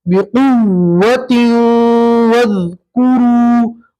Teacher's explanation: इदगाम करेंगे तनवीन का वाव के अंदर और गुन्ना भी करेंगे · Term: इदगाम मअल गुन्ना